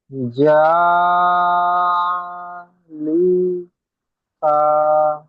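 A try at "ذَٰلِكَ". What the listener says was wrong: কা টান হয়ে গেল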